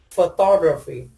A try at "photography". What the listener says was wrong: Excellent. It's stressed on the ta.